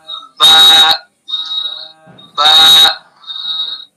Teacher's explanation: تری والے حصے سے با ادا ہوتا ہے اور خشکی والے حصے سے میم ادا ہوتا ہے. تو با کا مخرج دونوں ہونٹوں کی تری کا حصہ